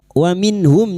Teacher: Nun sukun bertemu ha izhar halqi. Nun sukun dibaca jelas tanpa mendengung. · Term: idhar halqi